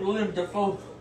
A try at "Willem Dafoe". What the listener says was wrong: It's not William, it's Willem Dafoe. Willem Dafoe.